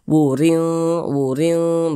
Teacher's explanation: kasratain ini baris dua ke bawah ini kasratain ya maka dia huruf ro tersebut dibaca tipis dibaca tarkik sehingga pangkalisan kita itu tidak naik terangkat ditipiskan huruf rnya wuring wuring begitu kemudian di sini tanda baca